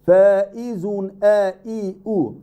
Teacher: it's tahqiq, very strong, very sharp, okay, very solid this hamza